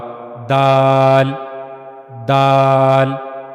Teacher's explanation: जबान की नोक का ऊपर वाला हिस्सा और ऊपर के सामने वाले दो दांतों के पीछे का मसोड़ा इस्तेमाल होता है। · और ये जबान की नोक का जो ऊपर वाला हिस्सा है, यह ऊपर के सामने वाले दो दांतों के पीछे के मसूड़े से जाकर जब लगेगा, तो फिर वहां से दाल अदा होगा।